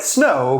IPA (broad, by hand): snow